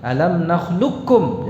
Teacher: Jadi kalau diidghamkan dengan sempurna langsung ke kaf. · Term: idgham mahad